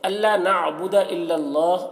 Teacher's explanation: اللہ کلام کو پر پڑھیں گے، اللہ کلام سے پہلے زبر ہے